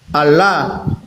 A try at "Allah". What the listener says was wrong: Allah. Abang, bukan O, bukan O, A dia. Tapi agak disamarkan sedikit. Allah. Bukan O, bukan O. Kami nggak menyebutkan konsonan O, Bang. Allah. Allah.